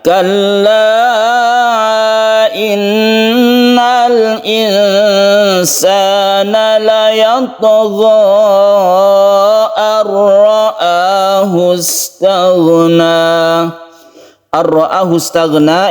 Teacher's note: Idgham artinya masuk ya. Masuk ke huruf ra sehingga nun ini tidak dibaca lagi, langsung tasydid ra dan tidak berdengung. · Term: idgham bila guna